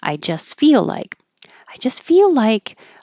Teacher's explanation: you can skip the T and just have an S I just feel like you're keeping the air flow going